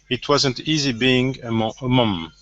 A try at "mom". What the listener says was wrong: Now that last word here is mom instead of mum, mom.